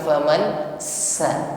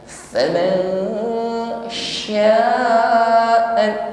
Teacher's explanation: Hati-hati mengucapkan shin, mohon dibedakan dengan ketika mengucapkan sin, bukan faman sa. Nah, tapi shin di sini ada sifat tafashi, intishar riha fil fami, suara atau nafasnya menyebar di dalam mulut kita